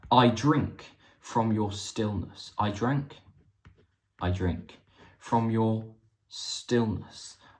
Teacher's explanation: There's a nice hissing at the end there, a sibilant hissing at the end to markedly end his poem.